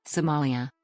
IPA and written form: səˈmɑːliə (Somalia)